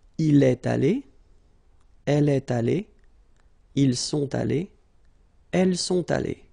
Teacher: even if you've got the final E, you don't pronounce it. Aller, even if you've got the S.